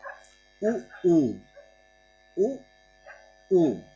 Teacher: ओष्ठ स्वर ये ओठों से उच्चारित होते हैं